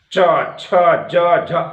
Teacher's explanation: जैसे आप उच्चारण कर रहे हैं तो जिह्वा तालु के पास चली गई